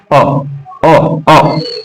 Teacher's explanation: उच्चारण जीभ के मध्य भाग से, जीभ के मध्य भाग से होगा उच्चारण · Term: मध्य स्वर